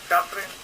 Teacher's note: I'm noticing that he doesn't fully pronounce the G's.